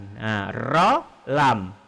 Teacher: Lam lebih ke depan ujung lidah naik ke depan sedikit.